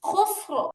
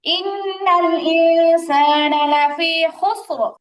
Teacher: তো রতে জবর হয়ে গেল, র মোটা হবে।